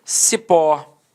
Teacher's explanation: Repare que a sílaba tônica é a última e ela é terminada em O.